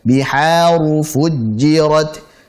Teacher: Biha tipis, ru tebalkan.